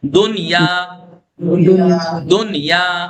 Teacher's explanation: قاعدے سے ادغام نہیں کیا جائے گا بلکہ نون ظاہر کیا جائے گا